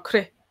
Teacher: the C is just running right into the R